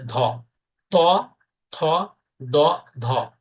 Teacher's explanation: তাহলে এই মহাপ্রাণ ধ্বনিতে বাতাসের চাপ বেশি লাগবে।